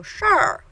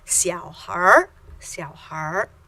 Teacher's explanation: We just add an R sound and give it a little extra retroflex sound.